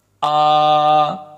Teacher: حمزہ کھڑی زبر آ، کھڑی زبر کو 1 سیکنڈ لمبا کرنا ہم نے سیکھا ہے تو 1 سیکنڈ لمبا کریں گے